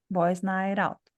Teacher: Esse T vai passar para a próxima. Quando ele passa, a gente troca ele por um R.